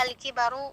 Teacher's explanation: alif lam qamariyah al kibaru, di mana lamnya dibaca dengan jelas.